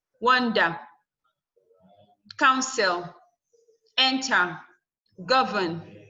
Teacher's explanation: These are verbs and they are stressed on the first syllable.